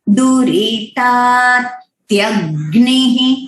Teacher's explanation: अभी जहां पे भी ये एक दो अक्षर का मेल होता है, लाइक त और य, उसमें हमें त्य वो साउंड एकदम क्लियर आना चाहिए। वो त्य त्य यानी हाफ त और य, तो य का भी आवाज सुनाई देना चाहिए और त का भी